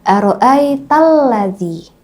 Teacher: Kalau alif lam syamsiah la-nya nggak dibaca ya.